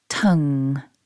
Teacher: It's very short. It begins with the t, then we've got the short vowel followed by the nasal ng.